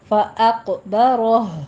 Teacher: ثم اماتہ فاق، اق، حمزہ باریک رہے گا، حمزہ کو پر نہیں کہنا، اق، قوف پر کر دینا ہے، قوف کے پر قلقلہ بھی کرنا ہے، اور آگے را بھی مفخم ہے۔